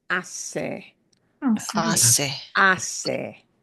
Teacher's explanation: The H will make no sound at all. It is spelled, but not spoken. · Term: silent letter